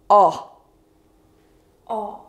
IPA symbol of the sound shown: ɒ